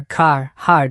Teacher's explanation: Rhoticity. Americans pronounce the R, car, hard unlike many Brits.